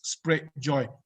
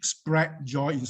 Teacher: The R sound has gone missing.